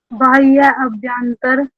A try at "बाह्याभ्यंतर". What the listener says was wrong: अभ्यंतर नहीं बोलना गुड़िया, अभ्यंतर नहीं बोलना, बाह्याभ्यंतर।